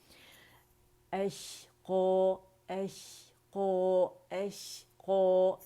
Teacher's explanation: अलजौफ से हमज़ा क़ता अदा नहीं होगा, बल्कि ये अक़सुल हल्क़ से की आवाज़ आएगी